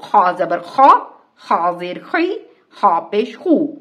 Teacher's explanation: اس کو بھی منہ بھر کر ادا کرنا ہے، یعنی اس کو ادا کرتے وقت زبان کی جڑ اوپر کو اٹھے گی. اس کی ادائیگی کو سمجھنے کے لیے آپ لفظ خراٹے کو ادا کریں.